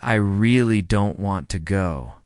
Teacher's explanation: The word really is stretched and emphasized.